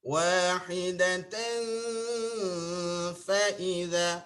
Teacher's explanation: Baru tekan fa ujung. Ini gigi dengan perut bibir yang di bawah.